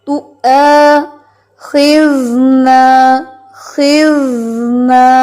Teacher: نہیں، اس لفظ کو پہلے غور سے سنیں. ایک تو حمزہ کو توا نہیں پڑھنا ہے کیونکہ یہ حمزہ کو سختی سے پڑھنا ہے